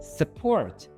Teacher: The U becomes uh. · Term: schwa